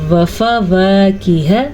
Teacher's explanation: ہا جو ہے چھاتی سے نکلے گا